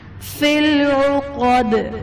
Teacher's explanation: دال حرف قلقلہ وقف کی صورت میں ساکن ہو جائے گا، تو یہاں پر ہم قلقلہ خوب ظاہر کر کے پڑھیں گے